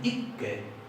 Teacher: en noruego tiene las consonantes duplicadas muy enfatizadas, entonces ellos dicen ikke, y hay que pronunciar la doble.